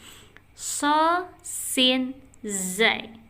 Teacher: Ujung lidahnya menyentuh dinding gigi seri bawah